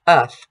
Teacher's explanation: We also see that there's no American R in here. This is an English British piece, uth.